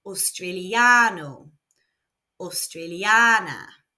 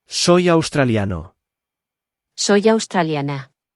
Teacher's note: there are no accents, so the emphasis is naturally falling on the second to last syllable.